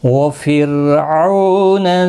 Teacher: را ساکن سے پہلے زیر ہے اس لیے باریک پڑا جائے گا